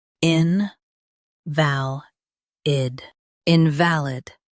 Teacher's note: Stress val and keep in soft.